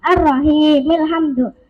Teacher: Alhamdu jika di permulaan hamzahnya dibaca alhamdu, jika di tengah kalimat hamzahnya tidak dibaca ar-rahimil hamdu. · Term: hamzah wasal